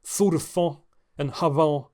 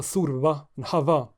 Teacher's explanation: word medial and final voiceless f and th merge with their voiced counterparts v and th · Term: Merger of intervocalic fricatives